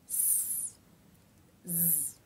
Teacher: Z is voiced, meaning you make a sound with the vocal cords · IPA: /z/